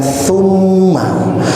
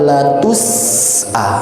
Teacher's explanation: Pertama dengan thumma, yang kedua dengan latus'a. Nah, yang pertama tidak berdesis, yang kedua harus keluar desisnya